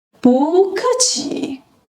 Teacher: When 不 is paired with a fourth tone character like 客 in 客气, it transitions to a rising second tone.